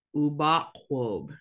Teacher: the U's can make two different sounds, the U or the O. And in this word, they make both.